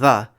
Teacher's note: for the voiced dental fricative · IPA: /ð/